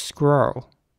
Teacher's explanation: Whereas in American English, it would be more like squirrel. So the R's are very rounded in American English, squirrel. And the E at the end is kind of not pronounced almost.